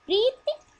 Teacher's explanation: प्रीति बोलने के लिए प्री पर पॉज लेकर के ति पर आवाज को झटके से खत्म कर देना पड़ता है, और हम आराम से बोलेंगे तो प्रीति बोलेंगे।